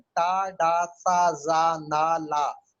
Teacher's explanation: आप बोलेंगे तो आपको लगेगा कि जबान मसूड़ों से टकरा रही है · आपके जो जबान है वो मसूड़ों से टकराएगी तो फिर निकलेगा टा। लिंगुआ अल्वियोलर, अल्वियोलर मसूड़ों को कहते हैं और लिंगुआ जबान को कहते हैं। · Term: लिंगुआ अल्वियोलर साउंड